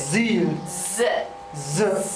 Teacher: The tip of the tongue isn't touching anywhere. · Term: Z sound